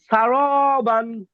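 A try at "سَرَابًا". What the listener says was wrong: হ্যাঁ আর ওয়াকফ করলে বা টান দেন ভাই, কিপটামো করা যাবে না, টান দেন।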